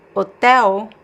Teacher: the L is pronounced as a weak U sound. · So the L is pronounced as a vowel, a weak vowel. There's no L sound.